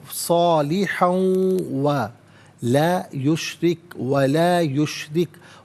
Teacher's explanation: را کے نیچے زیر، را کو باریک کر کے پڑھا جائے گا